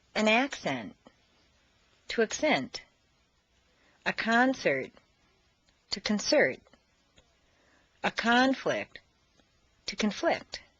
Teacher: change the stress from the first syllable for nouns to the second syllable for verbs